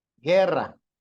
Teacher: guerra tiene su sílaba tónica en la penúltima